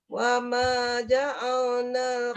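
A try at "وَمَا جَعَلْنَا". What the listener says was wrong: Jangan tebal, ja'al, lam tidak boleh tebal kecuali pada kalimah Allah.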